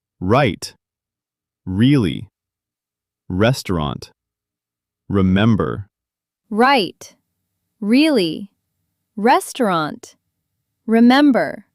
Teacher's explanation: But in American English, R is a very unique sound. Your tongue curls back slightly. Your lips round a little. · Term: the R sound